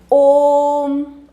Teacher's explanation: देता है जहां पर हमें ॐ का उच्चारण करना है लेकिन वहां पर ध्वनि जो है वह तीन गुना अधिक समय तक हमें उच्चरित सुनाई देगी इसे हम प्लुत स्वर कहते हैं